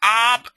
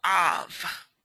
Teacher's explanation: Now, if you add the dagesh to the bet, okay, and here's the dagesh, right smack dab in the middle, it changes the B to a V. It still means father, but it turns the ab into an av.